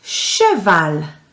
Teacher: we can hear the l in french when a word finishes with an l